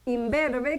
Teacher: Este in se convirtió en m. ¿Por qué? Porque automáticamente esta b que se pronuncia con los dos labios le contagió a la n se pronuncia como m con los dos labios.